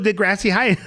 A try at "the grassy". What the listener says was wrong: When you say it, I know, but the way you say it, it sounds like you're saying the grassy high, not the grassy. like the grass, like the grassy hill.